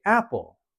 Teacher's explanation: we have a higher tone of the app part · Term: emphasis